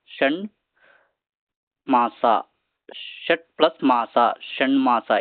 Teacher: ಅನುನಾಸಿಕದ ಅಕ್ಷರವು ಕೂಡ ನ ಆದೇಶವಾಗಿ ಬರ್ತಕ್ಕಂತದ್ದು ನೋಡ್ತೀವಿ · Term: ಅನುನಾಸಿಕ ಸಂಧಿಗೆ